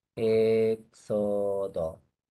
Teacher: la X entre vocales suena KS, así. Por lo tanto es así.